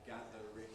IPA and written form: ˈgæðərɪŋ (gathering)